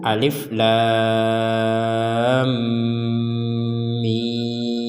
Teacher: maka panjang hurufnya lebih panjang daripada mad tabi'i